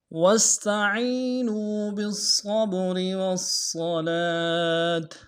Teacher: واستعینوا میں واو کو سین کے ساتھ ملانا ہے، سین سیٹی والا حرف ہے، سیٹی باریک ہوگی